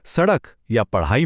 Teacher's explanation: इसके बाद है उच्छिप्त ड़ और ढ। इसमें जीभ तेजी से ऊपर तालू से टकराकर झटके से नीचे आती है